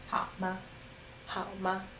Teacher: And ma is a neutral tone, so it just falls after the third tone.